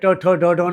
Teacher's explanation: मूर्ध्य जो स्थान है वहां से निर्माण करते हैं